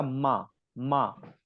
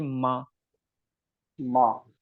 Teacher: माँ बोलते समय आप देखेंगे कि नीचे का और ऊपर का जो लिप्स है वो आपस में टच होते हैं